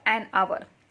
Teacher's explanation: While reading this H is silent. We read only these letters R.